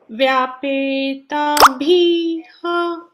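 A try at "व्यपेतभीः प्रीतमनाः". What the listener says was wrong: You should not say ha. Just you should leave it there. Vyapeta bas. Vihi na. See, aha, ihi, in between comes. Don't say. Just leave it. Vihi, you should not say. In the last it comes, there you should say bihi.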